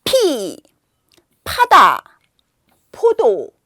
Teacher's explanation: 그지만 피읍은 팡 하고 공기를 팍 터트리는 소리예요. 그래서 영어의 피하고 비슷하지만 더 강하게 바람을 팍 뿜는 소리입니다. 그래서 입안에 공기를 모았다가 입을 닫고 모았다가 한꺼번에 하는 거예요.